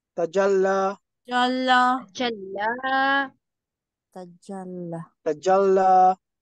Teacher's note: So the prolonging vowel should be on the lam. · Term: prolonged letter